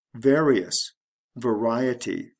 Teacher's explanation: the stress shifts from the first syllable to the second syllable